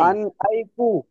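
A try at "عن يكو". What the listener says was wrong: আইকু ফাইকু কোথায় পাচ্ছেন বুঝি না আমি। ইয়ান, ইয়ান, ইয়ানুন জবর ইয়ান, আইন জের ই, ইয়ান ইকু, ইয়ান ইকু, ইয়ান ইকু।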